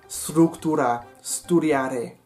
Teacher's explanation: no digo el “e” de las palabras como “estructura” o “estudiar” porque esas palabras no tienen un “e” en italiano